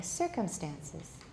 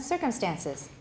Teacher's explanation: So if you're saying circumstances, that's too many stresses. And in this case, the main stress is at the beginning.